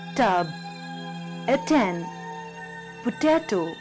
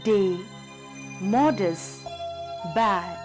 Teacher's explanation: tip of the tongue touches the alveolar ridge. As in the letter T in words like tub, attend, potato, and letter D in words like day, modest, bad.